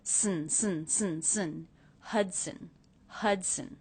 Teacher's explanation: when the schwa is followed by the N sound, you don't need to worry about making a separate schwa sound. It gets absorbed by the N.